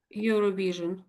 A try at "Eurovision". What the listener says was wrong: Oh, perfect. Absolutely perfect.